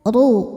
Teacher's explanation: Huruf ro dibaca tafkhim karena harakatnya dommah. Cara bacanya ditebalkan.